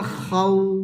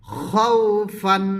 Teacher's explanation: ওয়াও সাকিনে ঠোঁট গোল করে দিবে